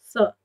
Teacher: स बोलने पर आपकी जीभ दांतों की तरफ जाती है, दांतों से थोड़ा स्पर्श करती है, इसीलिए इस स को दंत सा माना जाता है।